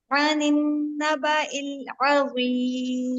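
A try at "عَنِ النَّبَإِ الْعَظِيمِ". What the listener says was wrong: शाबाश।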